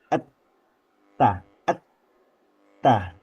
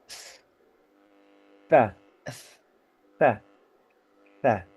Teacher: Suara itu kuat tertahan pada saat pengucapan konsonan huruf ta tanpa vokal itu sangat tertahan itu ee suara itu atau ee pengucapannya sangat tertahan ya sebelum akhirnya lepas pada vokalnya. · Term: syidah